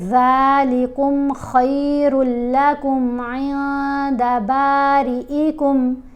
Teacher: جب بھی آپ دیکھیں کہ نون ساکن یا نون تنوین کے بعد، نون ساکن یا نون تنوین کے بعد تا، ثا، جیم، دال، ذال، ظ، سین، شین، صاد، ضاد، طا، ظا، فا، قاف، کاف، یہ والے حروف آئیں تو ہم نے نون کی آواز کو ناک میں چھپا کر پڑھنا ہے اور ایک حرکت کے برابر ٹھہر کر پڑھنا ہے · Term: احفا